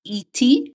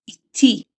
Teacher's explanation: The syllable stressing is at the end.